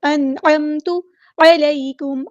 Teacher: کو یہاں ہلانا نہیں ہے، انعمت نہیں ہے لفظ یہ، انعمت، عین کو مستحلق یعنی مڈل تھروٹ سے ادا کرنا ہے